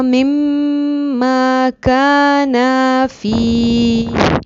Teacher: کانا نہیں پڑھیں گے، کانا تھوڑا سا ایک الف کے برابر لمبا کریں گے